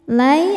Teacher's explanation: ada harfulin atau huruf lin sebab ada ya sukun sebelumnya fathah. Maka dibacanya lembut atau lunak.